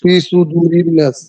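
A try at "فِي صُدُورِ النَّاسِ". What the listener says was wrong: ফি সুদুরিন নাস, ফিতে টান আছে, সুদুরিন নাসে টান।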